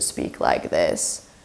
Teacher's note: if I were to speak like this, that is creaky voice.